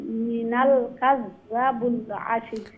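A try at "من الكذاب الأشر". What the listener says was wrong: কাযযাবুল, জালর বাদে আলিফ আছে। মিনাল কাযযাবুল আশির।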